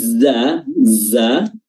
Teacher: dia tipis dan tidak memiliki sifat hams ya jadi udara yang keluar itu sangat-sangat sangat-sangat tipis sangat sedikita